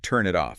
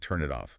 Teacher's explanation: the N sound at the end of turn links smoothly to the I vowel in it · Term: linking